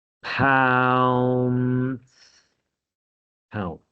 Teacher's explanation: I did start this with a stop sound, so you can't stretch p